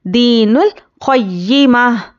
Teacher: या पर तशदीद है तो या को सख्ती से पढ़ना है, हरकत को जल्दी पढ़ेंगे।